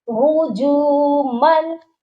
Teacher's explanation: میم کو لام مشدد کے ساتھ ملانا ہے، مال نہیں پڑھنا، الف کو نہیں پڑھنا